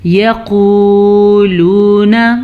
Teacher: قاف کو موٹا پڑھ لیجیے گا، قاف موٹا ہے اور یہ قاف پر بھی پڑھا جاتا ہے